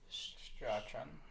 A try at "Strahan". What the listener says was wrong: No, you don't pronounce the CH, I'm pretty sure. I'm going to say Strahan. Michael Strahan from Charleston.